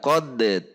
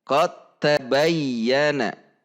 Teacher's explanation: cara membacanya cara membacanya adalah chotta tidak kode tetapi chotta sehingga huruf Dal benar-benar dilebur kepada huruf Ta atau di idghomkan chord tab bayi anak seperti itu jadi perhatikan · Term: idgham